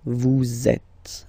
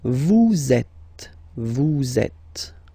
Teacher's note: So in that case, vous is ending with S, and then you tend to make a little link between them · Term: liaison